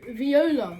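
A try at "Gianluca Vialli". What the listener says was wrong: close. V swapped the O for an A. Vialli. Vialli.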